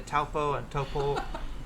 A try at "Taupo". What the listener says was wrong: You said it okay, but it sounded like you put an R at the end. It's Topol.